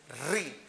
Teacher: तो री जो स्वर है इसको बोलते समय आपकी जीभ मूर्धा को टच करती है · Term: मूर्धन्य स्वर